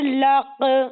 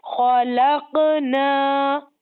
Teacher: خا زبر خا، لام قاف زبر لق، خلق، نون الف زبر نا، خلقنا. اس میں قاف میں ریپیٹیشن ہوگی، یعنی قلقلہ ہوگا. اس کا نام ہے قلقلہ، تجوید میں اس کو قلقلہ کے نام سے جانتے ہیں.